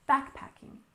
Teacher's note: we stress the first syllable in backpacking